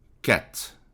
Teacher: você tem o sonzinho aqui do C, você percebe o som do A mais aberto e o T